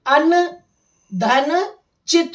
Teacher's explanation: तो ये न जो था वो च वर्ग के अंतिम अक्षर में बदल गया जोड़ते समय, अर्थात च छ ज झ ञ, तो ये न ञ में बदल गया।